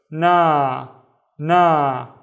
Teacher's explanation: the al if makes the na twice as long